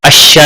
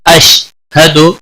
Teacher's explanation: شین کو ہلانا نہیں، حد شین کے اوپر زبر نہیں لگنی چاہیے، اشا نہیں ہونا چاہیے، اشہد یا کلکلہ نہیں ہونا چاہیے۔